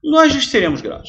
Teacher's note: o lhes, ele é quase engolido na frase, por isso que ele é átono, ele é sem força